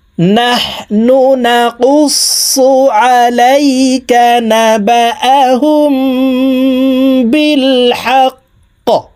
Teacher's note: কফ কলকলার হরফ উপরের দিকে ধাবিত করে কফকে সাকিন করতে হবে